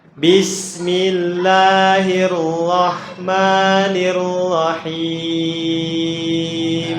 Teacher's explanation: ro-nya itu seakan-akan ada kol-kolahnya ya, mantul gitu ya